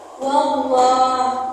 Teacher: Kenapa disebut tafkim? Karena sebelum lafaz jalal ada huruf yang berharakat fathah. Dibaca tebal.